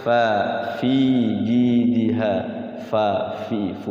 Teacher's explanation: jadi ada anginnya, ada hams yang keluar, ada angin yang keluar.